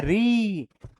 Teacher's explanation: अब देखो जब री बोलोगे तो जीभ ऊपर टच करता है हल्का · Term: मूर्धन्य स्वर